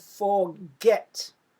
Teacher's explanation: If I say the word forget, you can hear that I'm stressing get